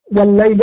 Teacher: والليل أيضا فيها يعتبر لامين، اللام مشددة بلامين، يبقى هنا في لام وقع بعدها اللام، يبقى حكمها إدغام، الاثنين اتضربوا ببعض بقت لام واحدة مشددة